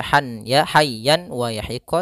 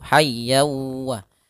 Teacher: hukum tajwid berupa idamun yaitu adanya tanwin an bertemu huruf w tanwinnya masuk kepada huruf wau